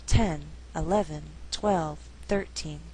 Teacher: Now when we count, the stress is on the first syllable. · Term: shifting stress